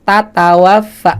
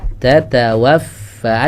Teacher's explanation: Harusnya kan tatawaffa, ada dikit hamsnya.